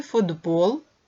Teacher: у слові футбол глухий ти уподібнюється до парного дзвінкого д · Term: уподібнення приголосних